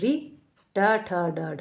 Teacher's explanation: मूर्धा जो दांत के जस्ट पीछे का जो हिस्सा है तालू और दंत के जो बीच का हिस्सा है